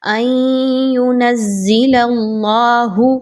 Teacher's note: اب یہاں پہ دیکھیں تو نون ساکن کے بعد یا کا حرف ہے، ادغام مع الغنہ ہے، ان ینزل اللہ، اللہ کے حرف سے پہلے لام کے اوپر زبر ہے تو اس وجہ سے اللہ کے حرف کو پر پڑھا جا رہا ہے